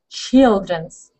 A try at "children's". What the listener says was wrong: Instead of chill, right? Because I'm hearing chill. Let's open your mouth a little. Open your mouth a little. Chill. But remember, open your mouth a little bit.